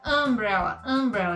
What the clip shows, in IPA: əmˈbrɛlə